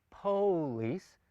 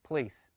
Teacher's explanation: That's in essence what a reduced vowel in Hebrew is. It's a quick, hurried vowel that almost becomes an erased vowel in the spoken form of the language.